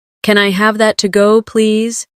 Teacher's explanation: When you say to go, your voice should rise slightly. It makes the question sound polite and clear.